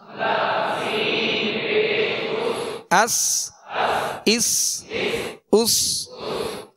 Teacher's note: سین کو سیٹی کی آواز میں سختی سے ادا کریں گے